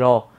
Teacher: এটা তো হচ্ছে আমাদের এই যে র, যখন আমি বলতেছি র, এই যে জিহ্বা ডগা হচ্ছে খুব সূক্ষ্মভাবে হচ্ছে আমাদের মূর্ধায় একটা ঠোকা দিচ্ছে